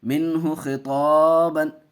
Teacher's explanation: یہاں بھی اظہار حلقی کا قاعدہ، نون ساکن کے بعد حروف حلقی کے 6 حرفوں میں سے ہا آیا، چھوٹی ہا، دیکھیے بغیر گناہ کر کے پڑھیں گے، گناہ نہیں ہوگا